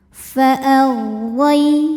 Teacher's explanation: Huruf ra dibunyikan secara tafkhim sebab ra berbaris di atas yaitu baris fathah. Maka dibacanya tebal.